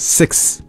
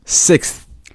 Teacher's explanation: the th sound in this word is actually very light yeah I mean you won't hear it if you if you